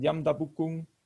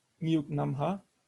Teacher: the non-past markers are realized with a glottal stop instead of the velar stop, because they are immediately followed by a nasal suffix. And the glottalization of g in syllable final position is actually quite a regular process in Mewahang.